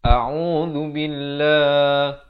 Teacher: lafaz jalalah ni dibacakan nipis, bukan billah, itu tebal.